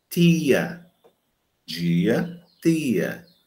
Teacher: Então, e chamando a atenção que esse T, diante de I, pode se realizar como dental